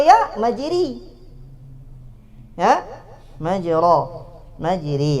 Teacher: Yang mana apa alif imalah itu? Dia adalah alif yang bercampur antara alif khalisah dengan ya khalisah, antara alif dengan huruf ya. Maka suaranya khalitun, bercampur antara dua huruf ini, minal harfain.